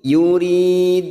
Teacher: Yuri kasar bertemu ya sukun 2 harokat mat tabi'i.